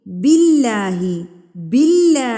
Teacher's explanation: होठों को फैला के बिल्ला इसकी अदायगी बारीक की जाएगी